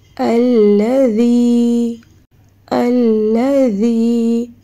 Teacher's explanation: ذی دو دانتوں کے درمیان زبان کو ہلکا سا نرم طریقے سے باہر نکالنا ہے